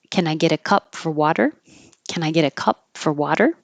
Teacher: you don't have to say for you can make it just the F and the r sound